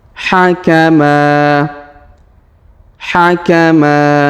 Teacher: Huruf ma kita panjangkan 2 harokat karena alif di depannya. Hakama, hakama.